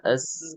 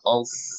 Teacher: So itu S tebal. S-nya sama dengan S biasa. Sasisu kita S biasa sama, tapi yang membuat dia beda adalah pangkal lidah atau belakang lidahnya naik, jadi dia tebal.